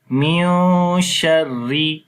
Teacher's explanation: you will hide the sound of Noon as it is Ikhfa. So we say Min Sharri.